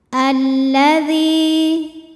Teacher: Karena tadi seperti sudah dibahas, lamnya ini ada dua. Lam yang pertama tidak dibaca, kita langsung baca masuk ke lam kedua. · Alladzi, dihukumi dengan mad tabi'i dhahiri karena ada ya sukun yang sebelumnya didahului baris kasroh, maka huruf dzal kita panjangkan 2 harokat. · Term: alif lam syamsiyah